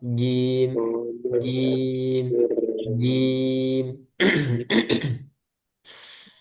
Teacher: Kemudian jim gak boleh keluar udara